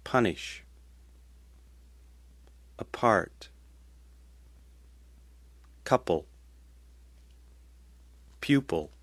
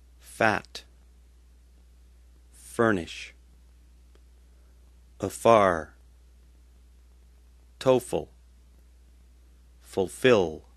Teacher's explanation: For P, have your two lips touching, like in B, except make it voiceless. For F, put your top teeth onto your bottom lip and make a sound exactly like V, except make it voiceless. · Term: P and F